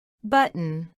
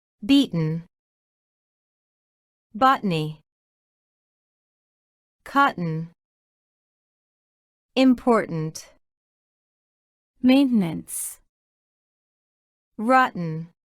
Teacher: Y dado que la T glotal se debe pronunciar cuando la T se encuentre seguida de una vocal más la N, ubicadas en una sílaba sin acentuación, el sonido de la vocal desaparecerá. Por lo que nos queda el sonido de la T reemplazado por el de la pausa glotal, conectado al sonido de la N.